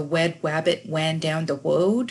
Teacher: Often W is used instead of the letter R